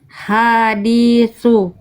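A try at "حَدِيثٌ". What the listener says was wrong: Oke, fathahnya nggak ketemu alif Bunda.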